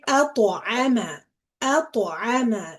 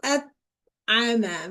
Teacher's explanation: You are bouncing on the letter ta. أط. If I don't bounce, I would say أطعم, which is wrong, which is incorrect, right? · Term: qalqala